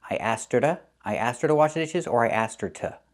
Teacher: we hear the word to pronounced as ta or da.